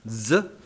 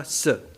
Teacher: en alemán estándar se distingue una s Sonora Z de una s sorda s y ambos son fonemas como en catalán en francés en italiano